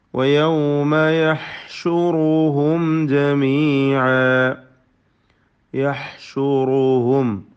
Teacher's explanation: തൊണ്ടയുടെ മധ്യമാണ് ഹാഇൻ്റെ മഖ്റജ്. റാഇന് തഫ്ഖീം കൊടുക്കുക.